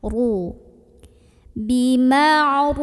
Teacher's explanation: Ra dibaca secara tafkhim karena ra berbaris dan barisnya di atas dhammah. Maka bacanya tebal, bukan sekedar ru tapi ru, diangkat pangkal lidahnya.